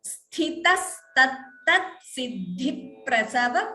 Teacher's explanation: Siddhi prasava dvitvam here. So second p is heard.